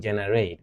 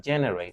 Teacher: Not generate, but generate with a stress on the first syllable